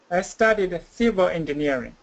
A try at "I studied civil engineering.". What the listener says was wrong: Good. One more time.